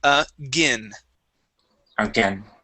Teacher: So instead of saying again, okay, and using a long A, gain, we focus on the short I.